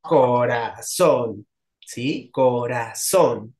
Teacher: la sílaba tónica cae en la última de izquierda derecha y termina con n Entonces sí que va